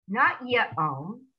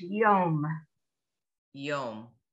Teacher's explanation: The yud, you say ya, yo, ya, ye, yay, whatever it is, you just go right into the vowel. So in this case, it's yom.